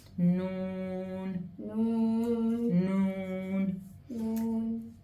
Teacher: the Noon and Mim both, the sound kind of comes like similar to a whistle through the nose